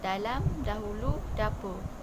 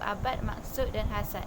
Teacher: konsonan plosif alveolar bersuara yang dilambangi oleh abjad fonetik antarabangsa D